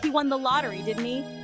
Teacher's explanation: the rising intonation shows that we're surprised by the information